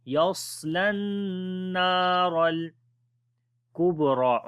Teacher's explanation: الذي yaslan, swad we read in heavy sound, la we connect with the noon, we make gunna here, and also we long due to alif madda. Ra we read again in heavy sound, yaslan naral kubra.